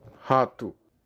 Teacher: R é pronunciado com uma consoante aspirada